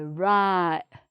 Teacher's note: instead of making the t sound in your mouth, you're sort of making a catching sound in your throat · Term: glottal stop